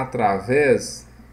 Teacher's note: o acento está na última sílaba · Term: oxítona